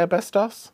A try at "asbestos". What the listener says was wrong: No, asbestos. You always miss the S off.